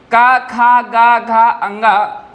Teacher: ये कहां से बोले जाएंगे आपके कंठ से बोले जाएंगे